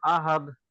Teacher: আহাদে ডালগুলো আগে নিচের দিকে ধাবিত করতে হবে আহাদে কলকলা করতে হবে